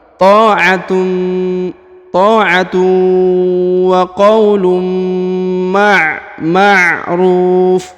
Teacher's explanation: Huruf ru dipanjangkan 2, 4 atau 6 harokat karena di depannya terdapat waw sukun ya, sebelum huruf pemberhentian. Dan huruf yang di ujung ini berhenti di sini, maka disukunkan ya, karena dia berada di ujung bacaan atau ujung ayat.